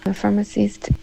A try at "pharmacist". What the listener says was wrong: And then it almost sounds like you said firm instead of farm. So I think of firm, like firme, like in English firm, like a mattress is firm. That's almost what you said. Versus farm. Farm.